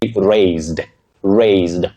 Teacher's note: Raised with that voiced sound Z for the letter S in that word.